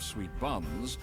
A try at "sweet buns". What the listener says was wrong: why in sweet buns did you put the emphasis on buns